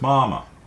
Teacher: depending so for example mother is mama mama first one is first tone which is a high even pitch